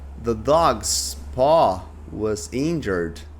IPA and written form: ðə dɔːɡz pɔː wəz ˈɪndʒərd (The dog's paw was injured)